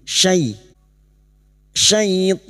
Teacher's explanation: fathah bertemu ya sukun kita lunakkan huruf lin